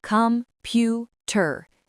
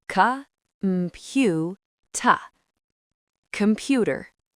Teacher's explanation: So the O at the beginning becomes a ghost. Cuh. The Er at the end becomes a ghost. Tuh.